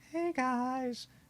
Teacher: There's like a breathy sound to it · She's got that windy, reedy kind of voice.